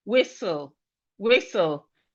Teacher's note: The T in whistle is silent.